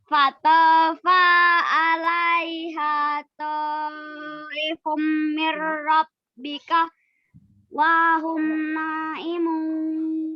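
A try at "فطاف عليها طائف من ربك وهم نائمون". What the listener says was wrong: Nah, itu kurang panjang ya. Wahum naimun. Karena naknya kurang panjang ya, ada ya.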